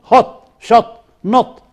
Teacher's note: it is back it is between open and half open it's a short